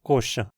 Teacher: E a sequência xa, como em coxa, primeiro se palatalizou para xa, como em coixa, e depois para um chá